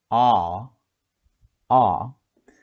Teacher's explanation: you can feel it is at the back of the mouth, and the mouth is really open